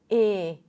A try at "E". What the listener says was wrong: Lower your tongue just a bit.